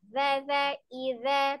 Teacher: Zal ada di ujung lidahnya, ada di ujung gigi seri bagian atas.